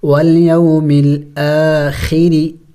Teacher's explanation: را کے نیچے جب زیر ہو تو را کو باریک کر کے پڑھی جاتی ہیں